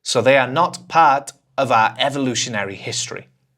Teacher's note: Quite often, you don't hear 'our', you'll hear /ɑː/.